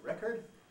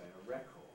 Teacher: record americans sometimes weaken the second vowel and say record but on the whole in british english we don't we keep a strong vowel always in the second syllable